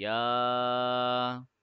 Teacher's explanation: يا will be stretched for 2 seconds because of the small mad